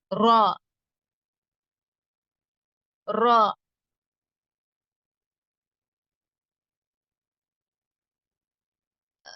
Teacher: ரா சொல்றப்ப அந்த நாவுடைய அந்த முன்னாடி பகுதியில இருந்து சொல்லுவோம்